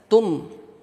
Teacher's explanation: ta di sini syiddah, ujung lidah kepada pangkal gigi seri atas.